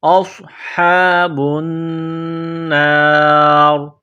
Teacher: فَأُولَئِکَ أَصْحَابُ النَّارِ، حمزہ کو صاد کے ساتھ ملانا ہے، صاد کو موٹا کرنا ہے، صاد میں سیٹی کی آواز پیدا کرنی ہے، ہا کو ایک الف کی لمٹ میں کھینچنا ہے، با کو نون کے ساتھ ملانا ہے، نون مشدد ہے تو غنہ کریں گے، آواز ناک میں چھپائیں گے